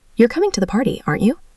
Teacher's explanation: My voice went up because I'm genuinely asking.